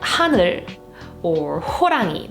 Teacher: It's an aspirated consonant that is pronounced with like a big gust of air. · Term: Hieut